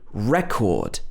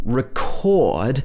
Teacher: in record, we don't have a schwa sound. But in record, when it's a verb, the first E is a schwa.